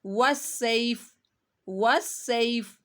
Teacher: فا کے نیچے جو زیر ہے جب یہ ہم رکیں گے تو یہ ساکن ہو جائے گی، یہ زیر نہیں پڑی جائے گی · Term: فا ساکن